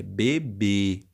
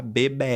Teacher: o acento circunflexo vai marcar um som fechado já o acento agudo marca um som aberto